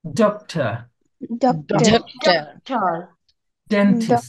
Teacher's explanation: from the same place আপনি যেখান থেকে হচ্ছে টি উচ্চারণ করছেন ঠিক সেখান থেকে আপনাকে ডি উচ্চারণ করতে হবে